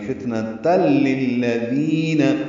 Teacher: ادغام کامل ہے، تا لام سے ملا دیں گے.